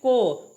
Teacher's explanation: अब इसी में देख लीजिएगा, को आप बोल के देखिए, को पूरा आवाज आपका कंठ से आता है